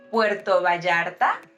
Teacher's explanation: Remember that double L has that ye sound.